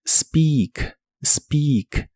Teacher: Primero, el verbo speak, que significa hablar, como en hablar inglés. La combinación de letras EA de esta palabra se pronuncian como una I larga o doble.